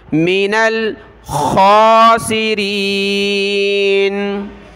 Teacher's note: خا کو گلے سے نکالیں موٹا کر کے